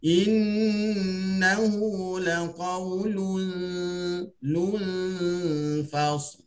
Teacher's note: Nun tu sahaja yang kita dengungkan, ya. Walaupun makhrajnya dah tak ada ketika itu, tapi sifat dengungnya itu masih wujud, tapi dengung yang ikhfa.